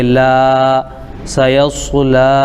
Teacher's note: لام پر کھڑا زبر ہے، الف مدہ کے برابر ہوگا، اس کو ایک الف کھینچیں گے